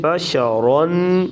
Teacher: جس را پر 2 زبر ہوں وہ را پر موٹی پڑھی جائے گی